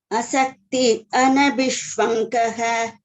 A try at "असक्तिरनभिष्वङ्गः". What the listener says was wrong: There is one ra here. Asaktiranabhishwangaha. Asaktiranabhishwangaha. Asaktiranabhishwangaha.